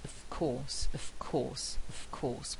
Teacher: with a very strong f sound there, and that's affected by the following sound, which is voiceless